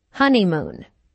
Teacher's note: there are three syllables in honeymoon with a stress on the first syllable